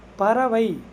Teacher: ஐ அப்படின்றது இறுதியில் இருக்குது. அப்போ இறுதியில் ஐகாரம் வந்தால் அதன் மாத்திரை அளவு 1 மாத்திரை.